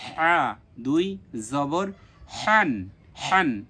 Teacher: জবর জানা আমরা জানি যে হা দুইটা এখানে এই হা টাকে কণ্ঠনালীর মাঝখান থেকে উচ্চারণ করতে হবে